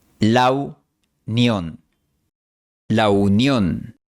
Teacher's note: En la frase la unión, el fonema U se realiza con la semivocal W. El producto es el diptongo AU, como en la palabra out en inglés de Estados Unidos.